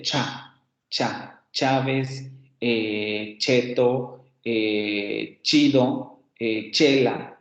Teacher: nuestra fricada, que es la única que tenemos, la fricada postalveolar sorda